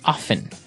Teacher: time now with pronunciation some people like to pronounce often right they kind of leave out the strong T sound while other people say often that's right both forms are correct